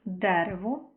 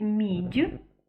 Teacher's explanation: наприклад дерево і ми чітко чуємо звук д він твердий то у слові мідь звук д перетворюється на звук дь стає відповідно м'яким